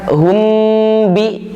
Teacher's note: lebih banyak yang lebih kuat pendapatnya yang mulutnya rapat, intibaqus syafatain, hum bi, tapi mimnya di situ lagi-lagi disebut sebagai mim mukhfah karena beda dengan mim biasa.